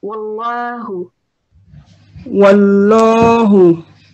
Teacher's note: Also, pronounce this lam because it's lamul jalala. It's preceded by a fatha. So we will pronounce it with a round mouth, so with a round sound.